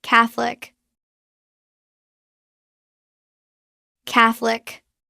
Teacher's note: Natural pronunciation. Drop the middle. O. It becomes Catholic. Two syllables.